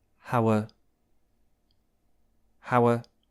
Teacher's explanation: those two words together sound like this hower and notice and notice how level the pitch of my voice is is it's not going up or down it's very level